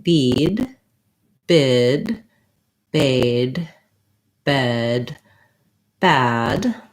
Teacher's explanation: watch my tongue if i say bead bid baid bed bad my tongue is getting lower and my jaw is slightly more open as i work through those front vowels